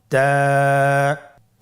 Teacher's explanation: জিহ্বার আগা সামনের উপরের দুই দাঁতের গোড়ার সঙ্গে লাগিয়ে উচ্চারিত হয়